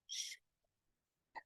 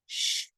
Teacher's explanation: this pull your tongue back toward the back of your mouth be sure your voice is off because this is a quiet sound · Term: sh sound